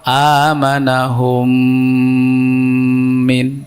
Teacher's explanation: mim mati. Bertemu mim, maka bunyi M. Dengung. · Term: Dengung M